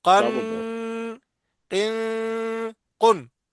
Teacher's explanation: یہاں پہ غنہ نہیں ہوگا۔ نہیں ہوگا، یعنی قن، غنہ نہیں کریں گے